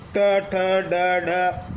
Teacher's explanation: इन व्यंजनों के उच्चारण में हमारी जीभ जो ऊपर वाले जबड़े का शीर्ष स्थान है जिसे हम मूर्धा कहते हैं उसे स्पर्श करती है और जीभ वापस झटके से बाहर आती है। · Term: उच्छित व्यंजन